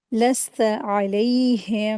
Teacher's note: आइन को अच्छे से हलक से अदा करेंगे